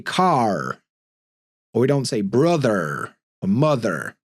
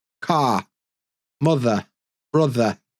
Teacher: we've got a lot of accents in the UK that are non-rhotic, which means we don't pronounce the R after a vowel sound